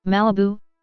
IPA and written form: ˈmælɪbuː (Malibu)